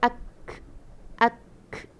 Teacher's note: Memang menepati dengan kaf ada sikit hamas. Cuma bila kalau misal kata kaf ni mati, dia akan kuatlah hamas dia. Ak, ak. Dia ada k kat belakang tu.